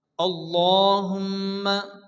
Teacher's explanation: মিমের উপরে তাসদিদ মিম গুন্না ওয়াজিব